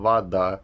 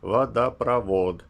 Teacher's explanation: «о» изменяется на редуцированные гласные, ну, которые напоминают «а» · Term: редукция гласных